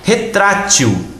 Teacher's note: Retrátil é uma paroxítona. Sim, porque é forte, é a palavra tra.